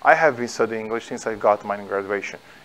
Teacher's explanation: a pronúncia, a entonação da forma afirmativa em inglês é decrescente.